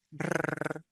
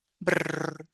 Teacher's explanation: Esta vibración que se da en los pliegues vocales es como si fuera un buzz laringio, hace así. Brrr.